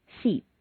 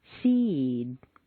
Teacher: When you have a word ending in an unvoiced consonant, one that you whisper, t, k, s, x, f, sh, you'll notice that the preceding vowel is said quite quickly and on a single stair step. When a word ends in a vowel or a voiced consonant, one that you say, b, d, g, z, v, j, j, the preceding vowel is said more slowly and on a double stair step.